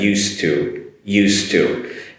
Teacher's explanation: the pronunciation is a very short d sound very very short and leads into the two